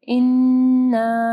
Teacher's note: نون مشدد ہے، ٹھیک ہے، یہاں پہ غنہ ہوگا اور الف مدہ کو پڑھنا ہے.